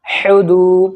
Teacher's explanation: پیش ہو ہا پیش ہو دال واپس دو اب واو ساکن سے پہلے دال کے اوپر پیش ہے واو مد ہوگا واو کھینچے گا